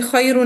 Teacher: ورش کے لیے را باریک ہو جائے گی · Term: ترقیق